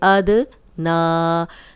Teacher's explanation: अद ना, खड़ा ज़बर है, 2 हरकत लंबा करेंगे। नून पे खड़ा ज़बर है और दाल पे जज़म है तो हिला के पढ़ेंगे।